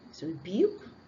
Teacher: hidden yes sound after the B sound